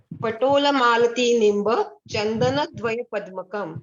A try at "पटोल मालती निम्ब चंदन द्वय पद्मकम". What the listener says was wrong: ऐसे नहीं, संथा देके पढ़िए, संथा देके टोन में पढ़िए।